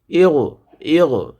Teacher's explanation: গয়নটা হলকের শেষ ভাগ হইতে উচ্চারিত হবে